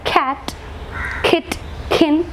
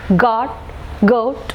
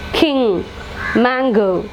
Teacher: The tension is at the back of the tongue and it is set against the soft palate or velum. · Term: velar sounds